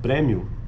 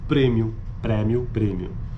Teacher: a pronúncia aberta da vogal anterior média como em premmio em contraste com a pronúncia Fechada no Brasil